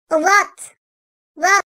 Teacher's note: Vat da arkadaşlar dilin sağ ya da sol üst azı dişleri teması ile çıkartılır. Dilin ucu boşta kalır.